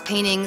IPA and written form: ˈpeɪn ɪŋ (painting)